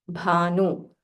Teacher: Bha is Mahaprana. So say it with aspiration.